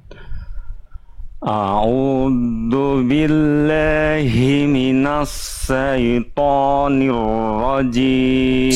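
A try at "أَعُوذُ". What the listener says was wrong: Sip, bagus. Tinggal di bagian a'u-nya. Jelaskan hamzah dan ainnya aja.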